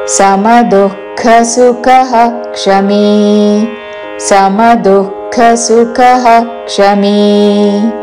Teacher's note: విసర్గ తర్వాత క్ష తో అక్షరం ఉన్నది కాబట్టి విసర్గ ఉచ్చారణ పూర్తిగా చేసి క్షమి అని పలకాలి